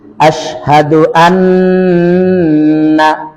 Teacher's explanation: জিহ্বা উপরে দাঁতের গোড়ায় আওয়াজ সব নাকে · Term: গুন্না